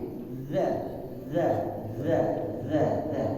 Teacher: Jadi ujung lidahnya menempel di gigi depannya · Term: zalnya